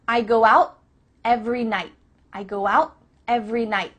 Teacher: your tongue is at the top of your mouth you're about to make the T sound but no air goes through so it's just stopped at the top of your mouth